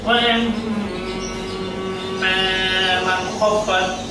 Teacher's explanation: এই মিম তাসদীদ বিশিষ্ট মিম, এই মিমকে নাকের মধ্যে কিছুক্ষণ ধরে রাখতে হবে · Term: ওয়াজিব গুণনা